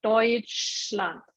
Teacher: in Deutschland, SCH would be like this SH in English